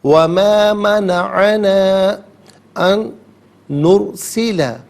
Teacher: ان میں نون ساکن ہے، اسے نرسلہ کی نون کے ساتھ ملائیں گے اور نون کی آواز کو غننے کے ساتھ ادا کیا جائے گا